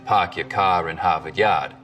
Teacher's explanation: The stereotypical Boston accents, of course, are non-rhotic, meaning no R sounds in park your car in Harvard Yard.